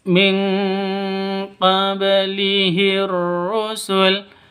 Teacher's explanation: Cara bacanya samar didengungkan siap-siap ke huruf qof-nya karena nun matinya ditambah dengan n ng karena bacaan ikhfa haki ikhfa hakiki.